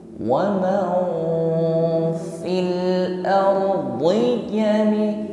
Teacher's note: Maka ketika mengucapkan nun sukun tidak sepenuhnya nun waman, bukan, tetapi nun sukun kita samarkan pada huruf fa. Ketika proses menyamarkan nun sukun dengan huruf fa, maka diikuti dengan suara dengung. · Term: ikhfa